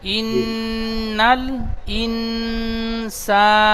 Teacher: ইনসানা সিনটি এক আলিফ টান হবে